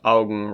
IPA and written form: aʊɡŋ (Augen)